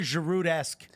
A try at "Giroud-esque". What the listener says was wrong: Giroud-esque. You pronounced the D. I wasn't used to hearing the D in Giroud.